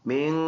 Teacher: ناک میں آواز لے کے جائیں گے نون میں